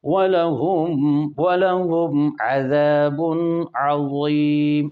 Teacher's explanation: وَلَهُمْ کی میم پر اظہار شفوی، عذابٌ کی تنوین پر اظہار حلقی